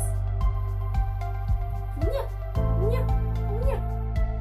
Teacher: Теперь язычок упирается в нижние зубки и закрывает воздуху выход. Поэтому он согласный. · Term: звук «не»